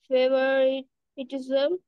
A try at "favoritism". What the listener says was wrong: হবে ফেভারিজম। ফেভারিজম, যেরকম নন্দিকা বলেছিল ফেভারিটিজম, টিটা উচ্চারণ হবে না, ফেভারিজম, TISM, ফেভারিজম।